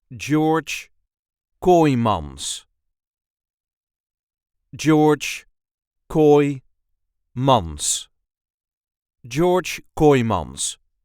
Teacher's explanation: There is a light emphasis on the first syllable of his second name.